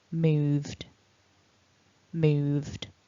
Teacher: when we make the ED ending, moved, we're just simply adding a D, a voiced D